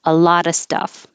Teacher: A lot of times you don't hear the V at all because it's just shortened to So instead of a lot of stuff, a lot of stuff, you can just drop the of the V part, a lotta. The T between these two vowels will change to D.